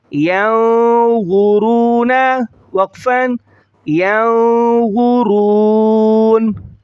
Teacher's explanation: را کو موٹا پڑھیں گے، وا کو موٹا پڑھیں گے